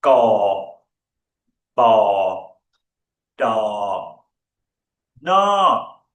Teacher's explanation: The last one in a falling tone.